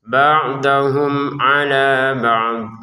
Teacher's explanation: mim sukun bertemu ain dibaca dengan jelas. Ba'dahum ala ba' untuk alanya kita panjangin dua harakat.